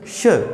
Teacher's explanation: पिछली वीडियो में अपन ने चर्चा की थी ये श, इसका जो उच्चारण स्थान होता है उसका मुख्य रूप से ध्यान रखा जाता है कि श, यानी कि इस श का उच्चारण करते समय जो वायु है वो बिल्कुल जीवा और तालु के मध्य घर्षण करते हुए बाहर निकलती है। इसको जो है अपन तालव्य स कहते हैं। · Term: तालव्य श